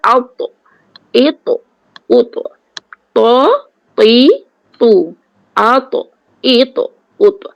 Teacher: Kemudian pangkal lidah kena terangkat. Kalau kita tak terangkat pangkal lidah, jadi at, it, ut. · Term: 2 kali tebal